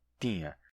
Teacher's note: Muitos dizem tinha, simplesmente T, I nasal, A, tinha, que é a pronúncia antiga.